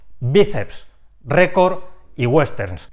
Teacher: en dos o más consonantes siempre ejemplos biceps récord y westerns estas tres palabras tienen el golpe de voz en la segunda sílaba contando desde el final bíceps termina en la secuencia p ese récord en r&d y